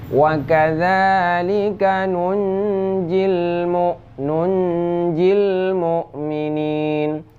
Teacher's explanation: ini termasuk ke ikhfa karena nun mati bertemu dengan jim. Walaupun nun tersebut tertulisnya dengan huruf kecil, yang namun tetap dibaca dengan lafaz sukun.